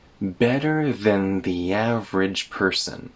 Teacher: than connects to the th sound in the.